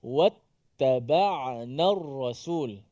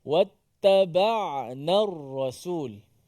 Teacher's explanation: Bila huruf ain tu mati, kita berikan masa sedikit. Maksudnya ain tu dimatikan.